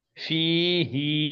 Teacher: এই খাড়া জেরটা আমার হলো দ্বারা এই ইয়া মাদ্দার সমান, মানে কি সমতুল। হ্যাঁ, খাড়া জেরকেও এক আলিফ টান দিতে হবে